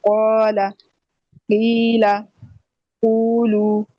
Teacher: ہوگا، تو یہ محل مد کی صرف کہلائیں گے، ٹھیک ہے۔ تو یہ چھوٹی مد ہوگی جس کو ہم مد اصلی بھی کہتے ہیں، اس کی مقدار 2 حرکات ہوتی ہے